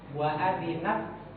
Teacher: Itu ada hamz. Jadi ada hamas, ada sifat mengalirnya udara. Hamas pada huruf ta. Wa adinat, keluar udara.